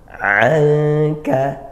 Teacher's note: nun sukun bertemu kaf, ikhfa haqiqi. Kita baca samar